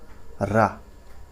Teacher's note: रा जो आपका आएगा लुंठित प्रकंपित वर्ण के अंतर्गत आएगा।